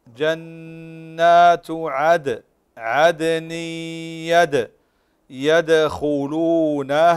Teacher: قلقل الدال في عدن ويدخلونها